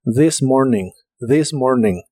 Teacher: La TH de this se pronuncia como una D vibrante.